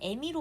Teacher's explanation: 어미를 뒤에 있는 이 모음 때문에 애미로 발음합니다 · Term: 이모음 역행 동화